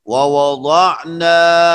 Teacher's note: مثلا ووضعنا، نون کے بعد الف مدہ، ووضعنا اور اس کے بعد عین حلقی، تو مدہ یہ جوف سے ادا ہوتا ہے اور عین حلق سے